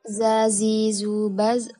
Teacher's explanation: apiko berarti ujung lidah sedangkan alveolar berarti gusi dalam hal ini ujung lidah bekerja sama dengan gusi atau menempel dengan gusi untuk menghambat udara yang datang dari paru-paru